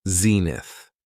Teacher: It has two syllables and the stress is on the first syllable.